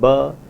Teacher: the voiced bilabial plosive ba